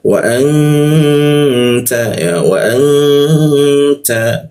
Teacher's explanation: Artinya kita dengungkan, kita tahan 2 ketukan di dengungnya di huruf ta dia. Ta itu menggunakan ujung lidah ditempelkan ke gigi